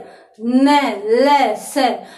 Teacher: वर्तस दांतों की जड़ को कहते हैं, दांतों की जड़, यानी यदि किसी वर्ण का उच्चारण दांतों की भी जड़ न ल स, यानी दांतों की जो जड़ है, दांतों का ऊपर का जो स्थान है, वहां पर यदि जीभ टकराने से उच्चरित होते हैं तो वे क्या कहलाएंगे? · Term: वर्तस्य वर्ण